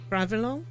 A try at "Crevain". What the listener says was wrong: Ooh, that was a bunch of extra sound. Cravain.